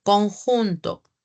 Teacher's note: Pero sí tengo el fonema K. La C se oye como una K, como una velar.